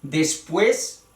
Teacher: Esta es una palabra aguda. El acento debe ir en la sílaba, la última sílaba. Pero la última sílaba está formado por un diptongo.